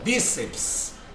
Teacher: perceba que a sílaba tônica é o bi